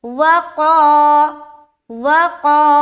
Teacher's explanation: تو جب قاف کے ساتھ الف کو پڑھیں گے اور الف مدہ کریں گے یعنی کہ کھینچیں گے تو الف بھی موٹا ہوگا